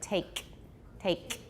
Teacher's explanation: Can most of you now produce an ejective? I'm hearing them a lot, especially with the final K in English, both in American and British English